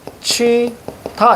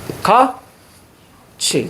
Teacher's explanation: 티읕이 이모음을 만나면 티읕은 치읒으로 바뀝니다.